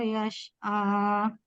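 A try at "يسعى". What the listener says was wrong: Untuk catatannya huruf sin pada kata yas'a. Ketika mengucapkan huruf sin, sukun, lidahnya rileks saja dan anginnya berada di depan. Yas'a, yas'a, jangan yas'a. tegang itu nantinya ke shin, bukan ke sin. Yas'a, biasa ya, jangan tegang. Tadi terdengarnya seperti shin, yas'a, yang betul seharusnya yas'a. Sisanya udah bagus, pertahankan hanya huruf sin saja tadi ya.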